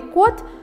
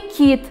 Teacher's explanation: слове код твердый согласный звук к обозначен буквой k и слове кит мягкий согласный звук ки